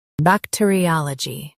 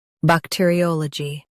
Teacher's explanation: Stress a in US, o in UK.